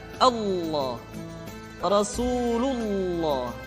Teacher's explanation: ketiga adalah pengucapan lafaz Allah lafaz Allah di manapun kapanpun maka lam yang terdapat pada lafz jalalah tersebut mesti ditebalkan